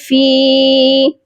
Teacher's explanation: فا کے ساتھ یا مدہ ہے، اس کو بھی ہم ایک الف کی مقدار لمبا کریں گے